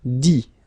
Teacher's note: You don't pronounce the final T